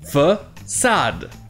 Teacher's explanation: vous avez le premier A qui se prononce donc E, mais le deuxième A qui se prononce bien à la française avec le son A.